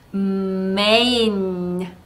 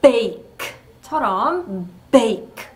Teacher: 제가 main를 읽을 때와 bake를 읽을 때 같은 장모음 A인데 소리의 길이를 다르게 한 거 혹시 느끼셨나요? main 할 때는 A만큼 읽어드렸고 bake 할 때는 A 하고 짧게 읽어드렸어요.